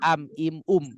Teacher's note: syafawi namanya izhar pasti dibaca je jelas am Im Um begitu Jadi mimnya dibaca jelas satu harakat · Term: izhar syafawi